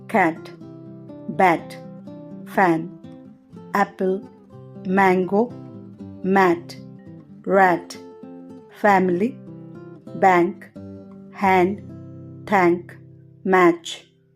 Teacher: పలికేటప్పుడు దాని actual pronunciation మనకు అర్థమవుతుంది తర్వాత షార్ట్ వల్స్ లో ఐదవది అ అనే ధ్వని వోకల్ ట్రాక్ట్ యొక్క ముందు భాగంలో వ్యక్తీకరించబడుతుంది నాలుక సగం ఉండి పెదవులు వ్యాపించి ఉంటాయి